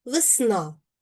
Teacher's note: Звук е наближається в звучанні до и. Позначимо це маленькою буквою и вгорі.